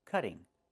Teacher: Move the stress to the first syllable, cut.